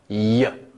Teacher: tongue raised high up against the palate in order to make that sound and therefore it involves the palate so it's our palatal sound again that's the y sound or